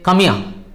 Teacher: So the H is silent there.